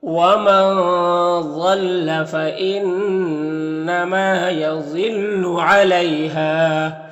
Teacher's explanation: ضاد حروف مستعلیہ میں سے پر پڑھیں گے۔ یہاں پر یالین سے نرم آواز کے ساتھ جلد پڑھیں گے۔ ہا میں الف مدہ ہے، 1 الف کے برابر کھینچیں گے۔ · ضاد حروف مستعلیہ میں سے پر پڑھیں گے۔ یہاں پر نون مشدد غنہ ہوگا، ما میں الف مدہ ہے، 1 الف کے برابر کھینچیں گے۔